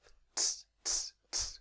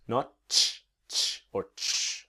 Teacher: And the T is a ts, ts. It's really just the tip of the tongue, just right there on the top of the mouth.